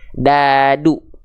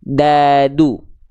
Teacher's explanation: jadi ujung lidah kita disentuhkan ke Pangkal gigi Sari atas · ujung lidah kita bukan ke Pangkal gigi Sari atas tapi ke langit-langit dan akhirnya bunyinya akan beda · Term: huruf Dal, huruf d